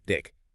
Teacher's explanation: the tongue pushed forward and actually touched the back of the front teeth, sometimes even sticking out slightly past them. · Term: dentalized stop